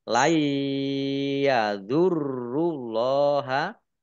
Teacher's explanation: nun sukun bertemu dengan huruf ya idgham bi gunnah masuk dengan mendengung yaitu mendengung ya ditandai ya-nya ada tasdidnya.